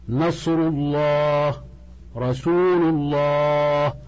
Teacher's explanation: تفخم اللام في كلمه الله اذا كان ما قبلها مضمومه